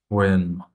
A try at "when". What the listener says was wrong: Make the e much longer.